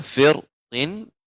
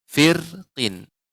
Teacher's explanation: Bisa dengan tafkhim tebal, ya, firqin, atau dengan tarqiq tipis, firqin, ya.